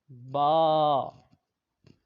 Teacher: دوسرا حرف ہے با، تو الف منہ کے خالی حصے سے پڑھا جاتا ہے، با یہ دونوں ہونٹوں کے تر حصہ سے پڑھا جاتا ہے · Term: حروف شفویہ